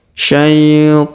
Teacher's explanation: Huruf ta dipanjangkan 2 harokat karena ada alif kecil di atasnya